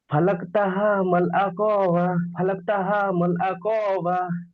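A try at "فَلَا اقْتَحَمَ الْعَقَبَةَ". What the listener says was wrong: কফ টান হয়ে যাচ্ছে, দুটোই। তা টান হবে না, কফটি টান হবে না।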